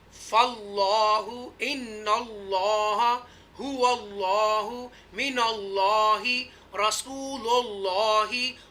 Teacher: वल्लाहु हमेशा पूर पढ़ेंगे अल्लाह के नाम को